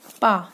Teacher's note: पा जब आप बोलेंगे ना तो दोनों ओठ आपके कार्य करेंगे। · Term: उच्चारण स्थान ओष्ठ